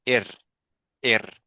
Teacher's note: The sound of the ra is so soft and so light.